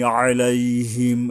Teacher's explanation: এই যে আইনে গলা চেপে আদায় করতে হবে।